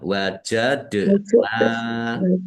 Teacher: Wajadna dal sukun bacaan qalqalah dibaca memantul ya. Ditampakkan pantulannya.